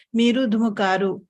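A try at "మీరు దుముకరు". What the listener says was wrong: I could hear little long vowel sound when you say karu. It is dumukaru, not dumukaru.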